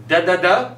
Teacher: a dental sound meaning we use our teeth and tongue